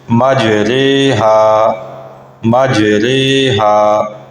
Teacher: را کھڑا زیر ری نہیں ہوگا بلکہ را کھڑا زیر رے، اس کو یوں پڑھا جائے گا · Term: امالہ, رائے امالہ